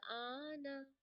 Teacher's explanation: مد لازم بنے گی تو اسے ہم 6 سیکنڈز کے لیے کھینچیں گے